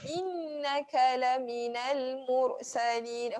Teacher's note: Ayat ketiga tak ada huruf tebal. Jangan angkat lidah ya. Semua ni adalah huruf yang nipis ataupun istifal, kena rendahkan lidah.